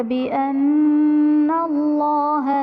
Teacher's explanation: ذَلِكَ بِأَنَّ اللَّهَ نَزَّلَ الْكِتَابَ بِالْحَقِّ وَإِنَّ الَّذِينَ اخْتَلَفُوا فِي الْكِتَابِ لَفِي شِقَاقٍ بَعِيدٍ۔ بِأَنَّ اللَّهَ میں نون مشدد ہے اس لیے یہاں پر نون مشدد میں غنہ کریں گے اور اسم جلالت اللہ عز و جل کے لام سے پہلے نون پر زبر ہے تو یہاں پر اسم جلالت اللہ عز و جل کے لام کو پر یعنی موٹا پڑھیں گے۔